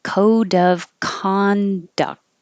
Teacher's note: the D will connect to the O.